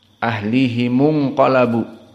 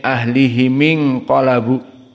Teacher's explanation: dibaca mim dalam keadaan kasrah bukan dalam keadaan damah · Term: kasroh